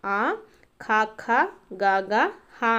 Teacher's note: కంఠముల నుండి పుట్టినవి కాబట్టి కంఠ్యములు అంటాము